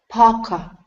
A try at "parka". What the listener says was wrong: Okay, almost. You're saying pa-ka. Okay, you need to move the tongue upwards. Parka.